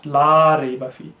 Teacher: la rayba is incorrect because the la has to be prolonged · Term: huruf madda